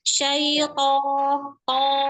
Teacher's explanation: Tebalkan lagi huruf to, apalagi dia diikuti alif, maka level ketebalannya ada di nomor 1.